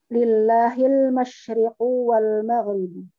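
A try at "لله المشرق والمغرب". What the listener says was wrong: Naam, ahsanti.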